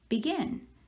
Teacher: so the second syllable is the one we are stressing or accenting and i'm gonna put an accent over that second part of